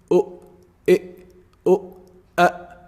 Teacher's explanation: Hamza is pronounced from also the deepest part of the throat